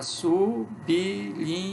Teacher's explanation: O B recebe um izinho. Fica sublinha. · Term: vogal epentética